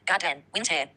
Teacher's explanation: First syllable equals stressed. Second syllable equals unstressed. Pattern. Strong, weak. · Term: Trochee